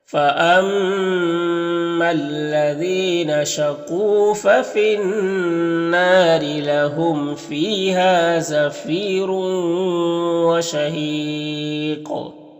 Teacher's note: یہاں پر تنوین کے بعد را کو پر دو پیش کی تنوین ہے تو را کو پر پڑھیں گے، اور اس تنوین کے بعد واو ہے حروف یومن میں سے تو ادغام ناقص ہوگا، اور یہاں پر وقف کریں گے تو مد عارض وقفی ہوگا اور قاف میں قلقلہ ہوگا، تو اس طرح سے پڑھیں گے فَأَمَّا الَّذِينَ شَقُوا فَفِي النَّارِ لَهُمْ فِيهَا زَفِيرٌ وَشَهِيقٌ۔